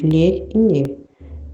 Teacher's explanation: o som palatal é produzido com a parte medial da língua contra a parte final do palato duro, como são os sons lhe e nhê, em língua portuguesa.